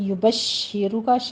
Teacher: شین کے پر تفشی کی آواز لائیں گے، نیچے کسرہ ہے، تھوڑا سا رک کر تشدید ادا کر آگے را مفخم کرنی ہے۔